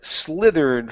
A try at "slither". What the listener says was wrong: Give me a good R instead of slithered. Okay, it's slither, slithered. Okay, almost. Let's try ending only on the R, so remove the ED. I want you to say slither. End on that R, slither.